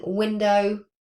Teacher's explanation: we're moving our tongue up to the back at the velar position, but we're also rounding our lips to make a w sound. So that's why it's not on the main IPA chart at the top, because there's two places of articulation for this sound. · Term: voiced labial velar approximant